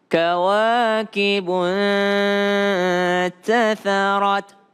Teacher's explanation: nun ketemu dengan ta, kembali lagi berdengung.